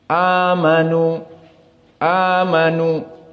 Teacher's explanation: jumhur membaca dalam keadaan mad thobi'i yakni mad badal dua harakat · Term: mad badal 2 harokat